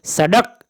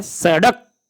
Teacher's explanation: जीभ झटके से ऊपर उठ के नीचे लाना पड़ता है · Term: उत्क्षिप्त व्यंजन